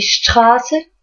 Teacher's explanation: Du coup, voilà, et Straße, qui veut dire la rue, le A est un peu plus long